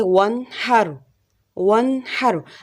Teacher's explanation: را ساکن ہے، اس کے اوپر تو زبر زیر پیش نہیں ہے، لیکن کیونکہ اس سے پہلے زبر ہے اس وجہ سے یہاں پر بھی را کو موٹا ہی پڑھا جائے گا